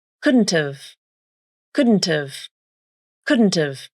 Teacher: Then, the a vowel in have is reduced to the schwa a. You still use nasal plosion on the D consonant, but you pronounce the T as the true T.